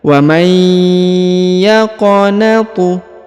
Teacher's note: huruf qaf berharokat sukun ya, maka dibaca pantul atau dikolkolahkan. Karena huruf qaf yang berharokat sukun adalah salah satu dari huruf-huruf pantul atau huruf kolkolah. · huruf nun sukun bertemu dengan ya, ditahan dan ditekan 2 harokat, didengungkan lalu dileburkan huruf nunnya menghilang ke huruf ya.